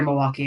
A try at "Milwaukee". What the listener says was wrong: No, don't pronounce the L. That's how I know you're not from here.